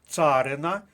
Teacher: наголос на першому складі